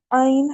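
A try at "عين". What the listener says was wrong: आइन की आवाज को दोबारा थोड़ा सा मेहनत करें, आइन पूरा अदा करना है, जोर लगा के थोड़ा सा।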